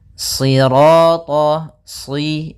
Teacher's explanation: Sirata, si, sambil pangkal lidah kita karena shad itu pangkal lidah kita terangkat dan melekat karena dia huruf idbaq. Sira, kemudian ra-nya ra tafkhim.